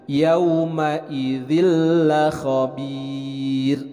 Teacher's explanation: ada tanwin bertemu dengan huruf lam ini adalah idgham bilagunnah jadi memasukkan suara Nun ke dalam huruf lam tidak disertai dengan gunnah